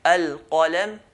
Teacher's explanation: qaf, is right at the back, near the throat. And kaf is closer to the mouth than the throat.